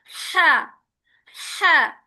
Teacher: ہا کا مخرج جو ہے حلق کے درمیان سے نکلے گا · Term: مڈ تھروٹ